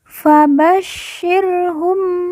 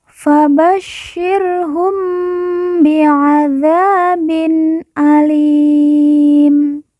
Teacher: syin yang bertasdid kita baca ditekan dan ditahan dua harakat